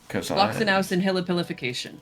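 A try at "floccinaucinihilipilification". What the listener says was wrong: Floxenausen nihilipilification. There's an extra syllable in there. Hillipilific-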